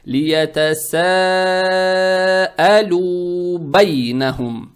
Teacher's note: Как я уже сказал, дамма приобретает оттенок ю.